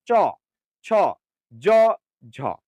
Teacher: তালব্য বর্ণ মানে উচ্চারণের সময় জিহ্বা তালুতে ঘষা দেবে, তালুতে ঘষা দেবে।